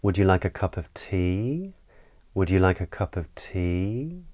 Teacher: we tend to use this sort of rising intonation pattern when we're asking questions so the pitch of our voice tends to go up